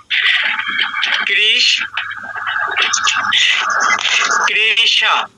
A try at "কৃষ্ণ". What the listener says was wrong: না না, কৃষ্ণ। হ্যাঁ কৃষ্ণ, একটু দ্রুত বলতে হবে, এখানে আপনার রসস্বর নেই, তো দ্রুত বলতে হবে। আমি বোঝানোর জন্য ভেঙে বললাম আর কি।